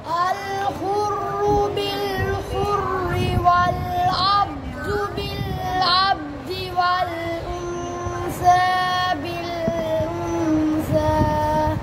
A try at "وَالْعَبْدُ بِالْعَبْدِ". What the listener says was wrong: والعبد बापर कलकला क्यों नहीं किया والعبد नहीं والعبد بالعبد जी पढ़ो